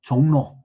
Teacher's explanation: 근데 이제 외국인들이 읽었을 때 전혀 엉뚱한 발음이 난다, 그러니까 이제 나중에 조금씩 개정을 했는데, 예를 들어서 뭐 여기 종로 그러면은 원래대로 한다면 JONG RO일 텐데 실제 발음은 R로 발음이 되지 않죠. 그냥 니은으로 발음이 되죠.